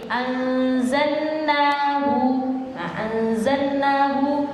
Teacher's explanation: Yang ketiga adalah idghamuha bima ba'daha, yaitu apa? Mengidghamkan atau memasukkan lam kepada huruf setelahnya.